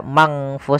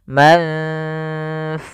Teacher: Maka ikhfa-nya itu, ikhfa adalah membacanya ke huruf yang setelahnya atau disamarkan ke huruf fa-nya.